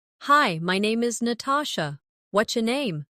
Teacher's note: Notice how what's your can sound like whatcha in casual speech.